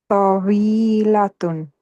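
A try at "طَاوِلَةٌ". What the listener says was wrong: Good. Yeah. So here'd be tawilatun.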